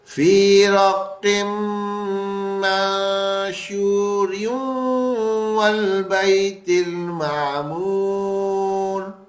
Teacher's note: را جو ہے نا وہ واو سے ملے گا، تنوین بیچ سے ہٹ جائے گا، غنّے کی آواز آ جائے گی